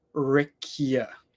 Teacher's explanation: So there is that little Y sound after the k